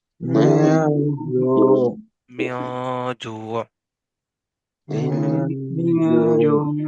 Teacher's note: نہیں نا، بالکل جو ہے وہ بہت زیادہ اظہار بھی نہیں کیا، اور ہلکی سی اس میں جو ہے وہ اظہار کی کیفیت آ رہی ہے، مطلب کہ ہلکے سے نون کا جو ہے وہ ساؤنڈ آ رہا ہے، اور زیادہ تر آواز چھپی ہوتی ہے اس حرف کی. تو جو، کیسے پڑھیں گے؟ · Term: اخفا